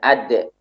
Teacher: Ini juga qalqalah, namun dia suaranya tertahan, syiddah.